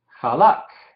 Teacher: notan el Shewa silencioso al final de la palabra, en la kaf final